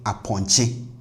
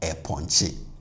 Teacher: So you don't say a ponche because E is plus ATR, but O is minus ATR. So the A in front should be minus ATR for this to be considered harmonious.